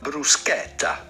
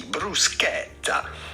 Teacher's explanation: Then because there is a double T here, insist on the E and the double T